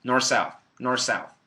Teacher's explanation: some people just completely delete the th